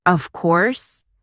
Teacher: When they are certain, their voice goes down strongly. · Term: intonation